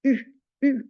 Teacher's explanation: le son u donc u un peu plus devant